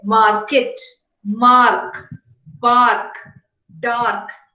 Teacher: we say is they would say indian speakers would say market the ra is always realized or it is pronounced the ra is never silent · Indian speakers would say market. The R is always realized or it is pronounced. The R is never silent. Whereas in received pronunciation, the R coming at the end of a word is always silent when words occur in isolation. · So the R before a consonant and the final R is realized in general Indian English, whereas in received pronunciation it is silent.